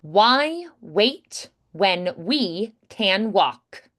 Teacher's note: On walk, no L, just the k.